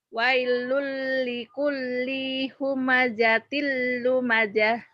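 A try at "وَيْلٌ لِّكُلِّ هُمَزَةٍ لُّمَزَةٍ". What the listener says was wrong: Bagus tapi linya pendek. Wailul likulli humazatil. Linya pendek. Wailul likulli humazatil.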